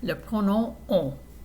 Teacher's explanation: the sound of the vowel is like o, but you're sending all that air and all those vibrations through your nose. So it's kind of like having a cold. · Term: nasal vowel sound